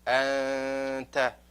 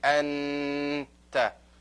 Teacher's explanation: And you have to hide it a little bit. You can't make it very clear, the noon.